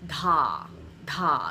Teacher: you hear that little puff of air that comes out